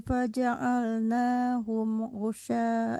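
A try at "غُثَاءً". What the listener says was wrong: Hati-hati bukan ghusya, kalau syin itu ada lekukannya di bawah titik tiga. Kalau ini tsa, jadi seperti tsa tapi ada nafasnya, tsa.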